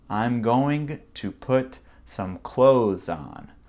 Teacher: Donc, je saute le TH parce que c'est très, très dur à prononcer